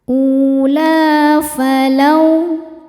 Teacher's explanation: Lau ada harfulin sebab ada wau sukun sebelumnya berharakat fathah. Cara membacanya cukup dilembutkan atau dilunakkan.